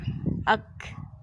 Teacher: اک پڑھا ہم نے تو شدت کے ساتھ پڑھا، اک، ہمس بھی ساتھ تھوڑی سی جو کھا کی آواز آئی